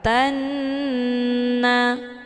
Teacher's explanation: huruf nun dinamakan dengan gunah musyaddadah cara bacanya tanya dileburkan ataupun dimasukkan ke dalam huruf nun dengan cara ditekan kemudian ditahan lebih kurang dua kali ketukan · Hukum bacaan ghunnah musyaddadah, dibacanya sambil didengungkan.